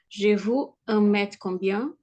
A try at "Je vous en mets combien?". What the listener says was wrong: En mets, ne prononçons pas le T final.